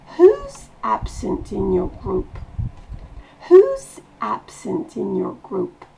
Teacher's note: Et on baisse la voix en fin de phrase.